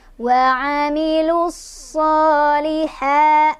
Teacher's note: ha-nya mad tabi'i lagi, ada fathah berdiri di atas huruf ha, dibaca panjang 2 harokat.